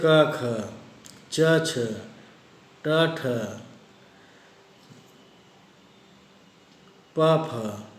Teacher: व्यंजनों के उच्चारण में स्वर तंत्रियाँ दूर दूर रहती हैं तथा वायु को बाहर निकलते समय उनमें कंपन नहीं होता है। ऐसी ध्वनियाँ अघोष ध्वनियाँ कहलाती हैं।